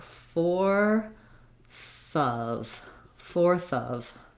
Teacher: That's because when I'm linking these, fourth of, I can kind of I'm still connecting them, but I can think of that TH sound as going on to the next sound.